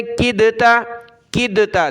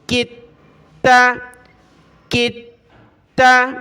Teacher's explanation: تو میں کاف کو ملاتا ہوں تا کے ساتھ، کاف تا زیر کتا زبر تا، کتا. دال کو نہیں پڑھنا، کاف کو ڈائریکٹ تا کے ساتھ · دال کو ہم چھوڑ دیں گے، تا کو پڑھنا ہے. کاف کو ڈائریکٹ ہم نے تا کے ساتھ ملانا ہے.